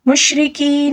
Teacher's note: مشرکین، اب دیکھیں یہاں پر یا مدہ ہے، ٹھیک ہے، یا مدہ کو تقریباً ایک الف کے برابر کھینچ کر پڑھنا ہوگا